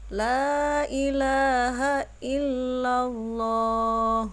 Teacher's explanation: dikatakan lam jalalah tafkhim atau tebal karena terdapat huruf lam dalam lafadz jalalah yang sebelumnya didahului oleh huruf lam yang berharakat fathah